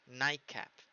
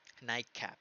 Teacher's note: La T pasa a una K. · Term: assimilation